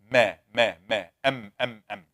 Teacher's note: the mim, both lips will get together. Ma, That is the makhraj number 16.